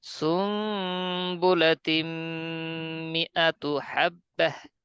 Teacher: নুন সাকিন ও তানবিনের পর যদি বা আসে, উক্ত নুন সাকিন ও তানবিনের মাঝে লুকায় যে নুনটা থাকে, সেই লুকায়িত নুনকে মিম দ্বারা পরিবর্তন করে পড়তে হয়।